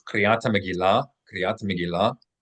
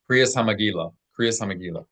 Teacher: The Ashkenazim traditionally have pronounced the tav with no dot as an S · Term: popularized Ashkenazi Hebrew